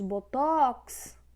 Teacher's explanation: Temos botox, também está na última sílaba, é oxítona.